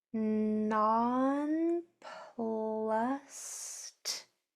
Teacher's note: That ed is saying t because the letter before it is voiceless. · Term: voiceless sound